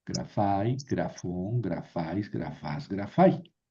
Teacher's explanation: Y aquí menos porque el acento está al final. Entonces, grafón, pues siempre va a ir el acento en la última sílaba.